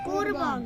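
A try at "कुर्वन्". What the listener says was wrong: এটা আমরা কুরবন এভাবে কি বলতে পারবো না, কারণ নিচে কি আছে? হসন্ত আছে, তাই এটা বলতে হবে কুরবন, থেমে যেতে হবে।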